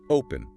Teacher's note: When we say open, we stress the front. Open. Because the front is heavy, the back stays light.